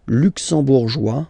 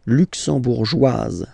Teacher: It will be only in this z sound, the difference between the masculine form and the feminine form